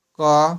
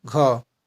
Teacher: अल्प मतलब थोड़ा सा वायु निकलेगा मुंह से और महाप्राण मतलब थोड़ा अधिक वायु निकलेगा